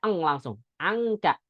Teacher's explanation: Nun mukfah itu pekerjaan hidung doang